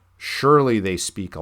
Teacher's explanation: we get this trochee, the substitution in surely. So the first syllable there is emphasized